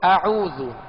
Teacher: جیسے ہم نے مشق کی، اعوذ، پہلے حمزہ ہے، حمزہ کو سختی کے ساتھ ادا کریں گے اور حمزہ عین میں فرق کریں گے. حمزے کا مخرج الگ ہے، ابتدائے حلق، اور عین کا مخرج وسط حلق یعنی درمیانے حلق